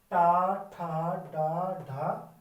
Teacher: दांतों से जस्ट थोड़ा सा ऊपर वाला हिस्सा होता है उसको छूके आती है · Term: मूर्धन्य